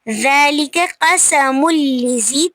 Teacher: تنوین کے بعد حروف ادغام میں سے لام آ رہا ہے تو یہاں پہ ادغام بغیر غنہ کے کریں گے